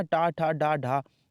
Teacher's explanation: टा ठा डा ढा, ये सब मूर्धा से बोले जाते हैं। लेकिन ये जा टा वर्ग का नहीं है, ये चा वर्ग का है और चा वर्ग तालु से बोले जाते हैं।